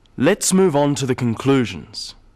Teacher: Stressing conclusions because it's the key word in this sentence. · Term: sentence stress